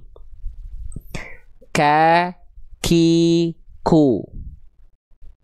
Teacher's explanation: Hams itu artinya mengalir nafas. Tapi untuk huruf kaf kadarnya hanya berupa terpercik nafas atau percikan nafas. · Sekarang huruf kaf. Karena huruf kaf itu nempelnya pangkal lidahnya agak ke depan ke perbatasan antara langit-langit lunak dan keras